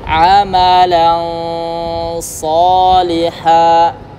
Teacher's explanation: walaupun ketika ikhfa, kalau hurufnya isti'la bacanya agak naik dan terkesan tebal. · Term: ikhfa hakiki